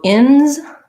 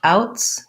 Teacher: the s says z because uh it is after a voice sound outs the s says s because it's after a voiceless sound